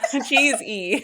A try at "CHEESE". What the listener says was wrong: No, it's just cheese. Cheese has an E on the end.